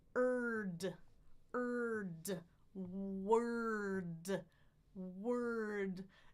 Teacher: So my tongue is in the back. My lips are forward. I release my lips as my tongue goes to the middle for the schwa. Lift it for the R, ra, on the bump for the D. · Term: co-articulated